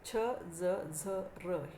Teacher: या व्यंजनांच्या उच्चारात दंतमूळ हे उच्चारण स्थान असते. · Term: दंतमूलीय व्यंजनं